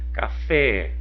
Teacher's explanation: o fé é a sílaba tônica